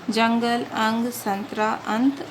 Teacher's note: अनुस्वार का उच्चारण केवल नाक की सहायता से किया जाता है।